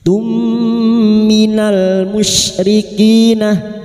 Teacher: Mim sukun bertemu mim. Idgham mimi memasukkan atau mentasdidkan dua mim disertai mendengung selama tiga harakat.